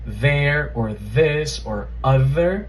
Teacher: As I was saying, the voiced dental fricative, right? That th sound, that buzzing sound from words like there or this or other, right? They all have the voiced dental fricative.